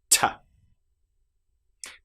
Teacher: What about the sound t? As you'll notice, no vocal cords here.